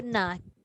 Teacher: Kita menyebut na tu, nak jejakkan na tadi tu dia ada sifat gunnah dia dulu.